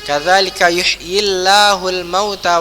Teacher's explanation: karena dia bergaris kasrah maka Allah yang setelahnya ini menjadi tipis